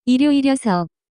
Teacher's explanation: it is hard to pronounce because your tongue has to move from the 리을, sound to the 여. sound right away